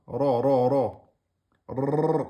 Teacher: cette lettre se prononce en mettant l'extrémité de la langue derrière les incisives supérieures